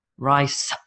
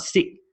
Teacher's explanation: a lot of Vietnamese speakers and some Southeast Asian speakers struggle to hit the final S. For example, I hear Vietnamese speakers say, rye, I eat rye.